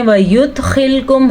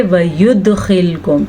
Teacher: दाल के ऊपर कलकला हो रहा है क्योंकि दाल हरूफे कलकला में से है